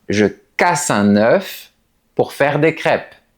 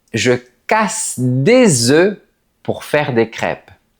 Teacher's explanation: Et ce n'est pas seulement la lettre S qui pose problème. Si on prend le mot œuf, au singulier, on prononce le F.